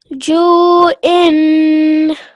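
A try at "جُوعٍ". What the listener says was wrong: Ayn, try and manifest the ayn sound, okay? And in waqf, ju'. Okay, there's an ayn at the end of this sound. In continuation, ju'in. And in waqf, ju'.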